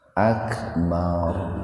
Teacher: Jadi ro-nya dibaca tebal karena ro didahului huruf fathah. Jadi jangan bar gitu. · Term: tabhim